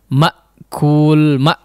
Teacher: huruf hamzah di sini memang karakternya adalah suaranya terputus ya